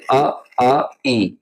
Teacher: निरनुनासिक जो स्वर होते हैं जिन स्वरों के उच्चारण में हवा केवल मुंह से निकलती है। ठीक है? केवल मुंह से हवा निकलती है।